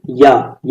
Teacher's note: या बोलो तो आपका जीभ हल्का सा तालु में टच होता है